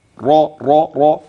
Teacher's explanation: تغليظه وتسمين الحرف في مخرجه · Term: التفخيم